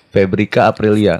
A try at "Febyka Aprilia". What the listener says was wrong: Bukan Febri, Febyka Febyka